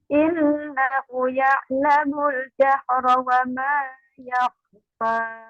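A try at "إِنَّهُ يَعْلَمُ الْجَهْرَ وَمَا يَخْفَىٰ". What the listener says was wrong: Ulangi, innahu, hu-nya panjang. Jangan cepat-cepat.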